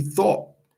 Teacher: It ends with a T, but very rarely do you hear the T.